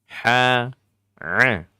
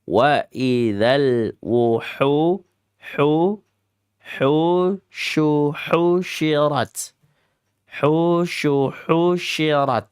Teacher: Mawdi'ul halqi kelompok tenggorokan pada bagian al-wasat al-halqi. Bagian tengah-tengah. Jadi dia satu saudara dengan huruf a.